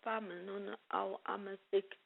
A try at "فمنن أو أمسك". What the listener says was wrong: فمنن أو أمسك. No bouncing. So, when you recited famnun aw amsik, okay, this is a common mistake, but it's a major mistake as well.